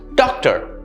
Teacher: The stress again is on the first syllable.